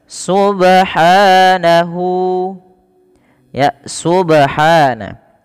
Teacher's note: Pada lafal ba di sini ada bacaan qalqalah yang dimana ba-nya ini perlu kita pantulkan